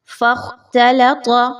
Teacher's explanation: تا باریک پڑھنی ہے، لام بھی باریک رکھنی ہے، اور پھر طا کو موٹا پڑھنا ہے۔ یاد رکھیے کہ خا اور طا کی وجہ سے تا اور لام موٹی نہیں ہو۔